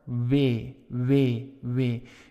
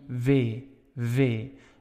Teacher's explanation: in the netherlands that w has a little bit of a v sound and it can be v v it's not a big difference